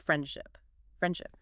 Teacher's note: So native speakers entirely drop the D. The word is universally pronounced friendship.